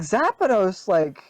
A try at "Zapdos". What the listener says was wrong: Yeah, you said Zapdos. Like you added an I on the end.